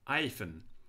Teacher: obviously the word hyphen was pronounced without the H